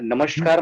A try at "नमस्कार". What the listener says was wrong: नहीं बोलते, नमस्कार बोलते हैं, है ना? नमस्कार। नहीं बेटा, श बोला आपने,